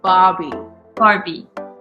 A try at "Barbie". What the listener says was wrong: Not like the doll, but just Barbie. Instead of saying Barbie, like, don't pronounce the R, just say Barbie.